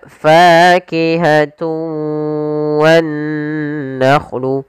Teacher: idgham arti memasukkan dengan tidak sempurna ada yang kurang atau masih sedikit menyisakan suara nunnya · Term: Idgham naqis